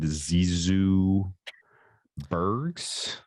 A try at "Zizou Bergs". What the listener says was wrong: technically you don't say the G, but I'm curious to see how Yeah, just Burrs. like Burris.